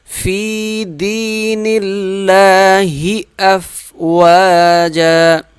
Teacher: فا یا زیر فی 1 الف کے برابر کھینچ کے پڑھیں گے، اور دین اللہ، یہ یا بھی 1 الف کے برابر کھینچ کے پڑھا جائے گا۔